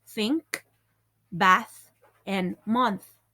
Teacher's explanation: the first th pronunciation is voiceless